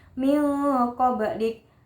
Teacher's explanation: nun sukun bertemu huruf qaf berarti ifa hakiki dibaca samar